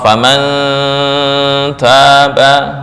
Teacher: cara membacanya ikhfa lebih besar daripada ghunah. Berarti lebih condong kedengung. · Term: ikhfa akrab